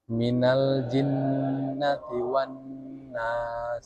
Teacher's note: Guna berarti dia dengung. Nah dengungnya itu kadarnya itu dua harakat.